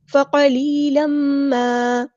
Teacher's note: قاف ہمارا heavy letter ہے، پورا ادا کریں گے ، یا مد آ گئی ہے تو مد اصلی کریں گے،